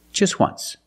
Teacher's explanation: phonetically it makes the sound like a w o once so phonetically the t is between consonants so it's silent link to sounds just once there's no t just once example